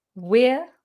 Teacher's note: It's got the diphthong ear in it, like your ear.